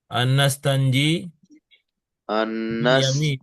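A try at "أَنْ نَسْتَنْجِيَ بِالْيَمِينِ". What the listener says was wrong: anastanjia. Karena ada an. Ketika nasab, tanda nasabnya nampak tuh fathahnya. Anastanjia bil yamini.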